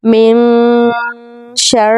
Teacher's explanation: ایک بار پڑھیں قل اعوذ برب الناس ملک الناس الہ الناس، تینوں نون پر ہم نے غنہ کرنی ہے، ٹھیک ہے، یہاں پر نون کو چھپا کر پڑھنا ہے